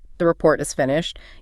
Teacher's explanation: by letting your voice go up at the end, you turn it into a question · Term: rising tone, the classic uptalk